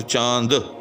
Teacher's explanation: تو یہاں یاد رکھیے گا کہ چونکہ نون غنہ جو ہے یعنی نون جو ہے یہ تو لکھنے میں نون ہے اگرچہ، لیکن پڑھنے کے اندر یہ صرف آواز کو بدل رہا ہے، یہ کوئی الگ جو ہے وہ تلفظ اس کا یہاں نہیں ہو رہا